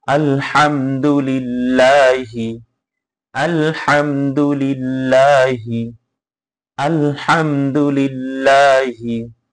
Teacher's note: মিম সাকিনের পরে যদি দাল আসে তাহলে ইজহার করে স্পষ্ট করে পড়তে হবে। আলহামদু, অনেকেই আছে আলহামদু, হ্যাঁ, এরকম গুণনা করা যাবে না, দেরি করা যাবে না মিমের পরে।